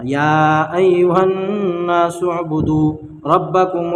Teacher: یا ایھا الناس اعبدوا، اس میں دیکھیے یہاں پر کیا ہے کہ حروف مدہ کے بعد، یعنی یہ جو ہے یا کھڑا مد زبر، یا اس کے بعد کیا ہے حمزہ ہے، تو یہاں پر کیا ہوگا، مد منفصل ہوگا، مد منفصل کو 3 الف کے برابر کھینچ کر پڑھنا